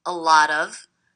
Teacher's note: this T is a flap T. It sounds like a D. A lot of. That's because it's coming between two vowel sounds.